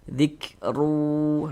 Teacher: huruf ra memiliki tanda baca dmatain, maka dibaca tapkhim, dibaca tebal sehingga pengkalisan kita naik terangkat ke atas. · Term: tabkhim